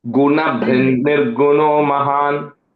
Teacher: make sure that double n sound is coming though